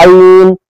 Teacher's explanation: बीच वाला जो हलक है वो आइन का मखरज है